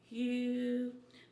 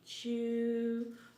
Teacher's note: The sound ew is back rounded.